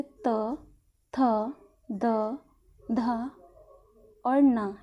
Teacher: दंत द्वारा किस किस का जो ता वर्ग होता है, ता वर्ग के जितने भी वर्ण होते हैं, जैसे त, थ, द, ध और न, इनके साथ साथ रा, ल और शा, इनका उच्चारण भी किसके द्वारा होता है, दंत द्वारा